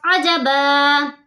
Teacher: دو زبر کو ہم ایک زبر میں بدلیں گے. ایک الف کے برابر کھینچ کر پڑھیں گے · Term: وف بالابدال